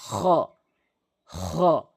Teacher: এরপর আসুন খ, খ, আমি যেভাবে সাউন্ডটি করছি আশা করি বুঝতে পেরেছেন। খ হলকের শেষ থেকে খ এভাবে উচ্চারণ করবেন